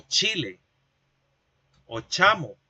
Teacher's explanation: esta consonante, el africado posalveolar sordo, es el que representamos en la escritura con el dígrafo CH, es decir, con la famosa Che.